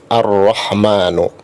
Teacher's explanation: di situ ada alif lam tapi tidak dibaca Al-Rahmanu, tapi langsung ke huruf ro-nya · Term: alif lam syamsiyah